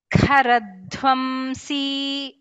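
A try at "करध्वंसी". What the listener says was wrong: Makara should be heard.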